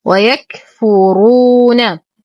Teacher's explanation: نفخم الراء مع إتمام الضم بعدها واو ساكنة فهو مد طبيعي بمقدار حركتين